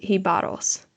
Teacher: Now, I looked up her pronunciation of that word because it was a new word for me. And it sounds like the emphasis is on the second syllable